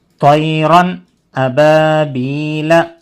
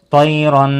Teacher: نون کی آواز کو ظاہر کر کے بغیر غننے کے جلدی پڑھنا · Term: اظہار